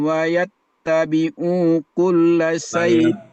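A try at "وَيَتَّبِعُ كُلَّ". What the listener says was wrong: Wayattabi'u kulla. Wayattabi'u. Mu-nya pendek. Coba diulang dari situ aja.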